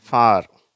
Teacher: இந்த ஒலியை எழுப்பும்போது உதடுகள் வட்டமாவதில்லை. சரி, அவை வட்டம் அமைக்கவில்லை. அவர்கள் பரவி இருப்பார்கள். அப்போதுதான் இந்த 'ஆ' என்ற சத்தம் வருகிறது. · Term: 'ஆ' என்ற ஒலி